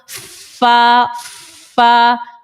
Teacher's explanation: اوپر کے دانتوں کے کنارے ہمارے نیچے ہونٹوں کے جو تر حصہ ہے اس کے وہاں جا کر لگ رہا ہے تو فا نکل آتا ہے